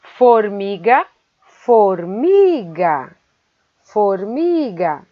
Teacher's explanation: A sílaba mi é a mais forte e ela é a penúltima de trás para frente.